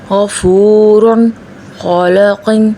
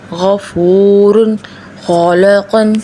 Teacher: حروف غین، خ ادائیگی گلے کے اوپری حصے سے آواز کچھ بھاری محسوس ہوتی ہے۔ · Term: ادنیٰ حلق